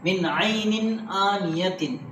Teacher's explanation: تنوین کے بعد حروف حلقی میں سے حمزہ آیا ہے، اظہار لیٹرس میں سے حمزہ آیا ہے، تو اس لیے یہاں اظہار کر کے پڑھیں گے، یعنی ناک میں آواز نہیں جائے گی